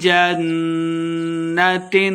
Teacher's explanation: جنت نون مشدد ہے غنہ کر کے پڑھنا ہے